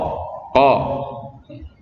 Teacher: Makharijul dari huruf qa terletak pada pangkal lidah dan langit-langit.